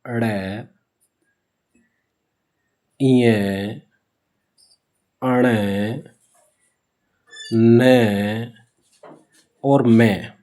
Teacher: ये है नासिक्य व्यंजन इसमें क्या होता है इनका उच्चारण नासिका के साथ है नासिका के साथ जैसे ण का कंठ से प्य का तालु से ण का मुर्दा से न का दांत से और मैं का ओष्ठ से तो इस हिसाब से होता है तो साथ में तो इनको नासिक्य व्यंजन कहते हैं।